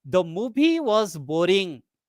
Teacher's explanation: So when you give focus on the word boring, it indicates the movie is very dull and uninteresting. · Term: tonic stress